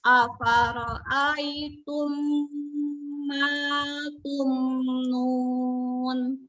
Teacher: Ya, izhar jelas dibacanya mim sukunnya.